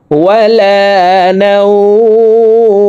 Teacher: 1 আলিফ টেনে মিমকে সাকিন করতে হবে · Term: মধ্যে লিন